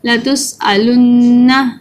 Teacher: یہاں پر دو نون مل رہے ہیں، نون کے ساتھ نون ہے اور اس کو ہم نے تھوڑا سا غنہ کریں گے. یہاں تھوڑی سی آواز ناک میں لے کے جائیں گے، نون کے اوپر شد ہے.